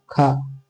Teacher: वह वर्ण जो अघोष महाप्राण वर्ण है